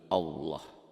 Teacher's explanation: Lafaz Allah dibaca tafkhim, tebal, berbunyi Allah.